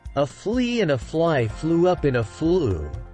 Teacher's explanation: F is voiceless, pronounced without the voice by a strong push of air through pursed lips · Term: fricative F sound